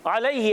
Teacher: या साकन से पहले जबर यालीन अदा होगा नरमी से अदा करते हैं यालीन को